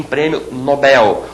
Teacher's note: em português essa palavra é oxitona não se diz prêmio Nobel e sim prêmio Nobel